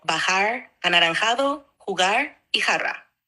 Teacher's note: es un sonido más fuerte y gutural que muchos otros sonidos en inglés o en francés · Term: sonido de la J